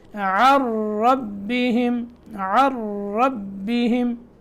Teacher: عن ربہم، نون ساکن ہے، نون کے بعد را مشدد ہے، تو یہاں عین کو را میں ادغام کرنا ہے، نون چھوڑ دیں گے. یہ نون لکھنے میں آتی ہے، پڑھنے میں نہیں آتی